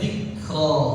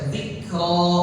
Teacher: Jangan ditambahin seakan-akan ada huruf hamzah.